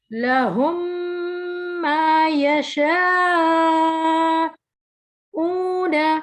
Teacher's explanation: میم ساکن کے بعد دوسری میم آ جائے تو وہاں پر ادغام کرتے ہیں